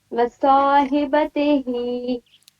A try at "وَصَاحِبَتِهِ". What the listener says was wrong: تا کو مجھول پر رہی ہیں، تیہی تہی نہیں تیہی،